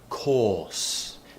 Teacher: the r is sometimes replaced by vowels